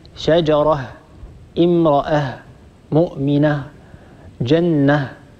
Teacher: إذا وقفنا على هاء التأنيث سننطق هاء ساكنة